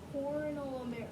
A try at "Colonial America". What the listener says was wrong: There's no R. Try again, but there's no R.